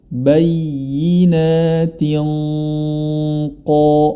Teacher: huruf ta yang berharokat kasrah tani bertemu dengan huruf qaf ya. Maka di sini dia gunnahnya menjadi tebal